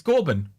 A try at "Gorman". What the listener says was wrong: Yeah, there's no B.